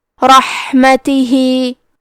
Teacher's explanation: کلمت رحمتہ میں کیونکہ را پہ زبر ہے تو ہم یہ حرف کو موٹی آواز میں پڑھیں گے. ہا کی ادائیگی حلق کے درمیان والے حصے سے ہے کیونکہ یہاں ہا ساکن ہے تو ہم یہ حرف کو ہمزے سے پڑھیں گے.